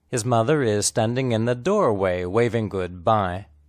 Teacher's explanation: The important content word is mother. The unstressed words are his and is. The words mother and is are linked together, but not contracted.